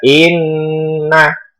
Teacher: Itu cara membacanya berdengung agak lama. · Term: gunnah musyaddadah